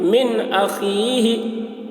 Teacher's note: फमन उफ़िया मिन अख़ीही, मीम नून ज़ेर मिन, हमज़ा ज़बर अ, नून साकिन के बाद हरूफ हल्की में से हमज़ा आ रहा है, इसलिए नून की आवाज़ को, इसलिए नून को ज़ाहिर करके बिला गुन्ना के जल्द पढ़ेंगे, इसको इज़हार कहते हैं